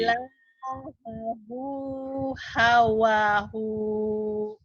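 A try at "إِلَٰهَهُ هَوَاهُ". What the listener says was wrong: Hunya pendek. Ayo lagi. Hawahu. Ilahahu hawahu gitu. Ilahahu hawahu lagi.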